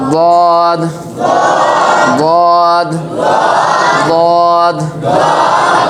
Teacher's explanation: দদ অক্ষর বাম পাশের মারির দাঁতের গোড়া থেকে মোটা করে পড়তে হয়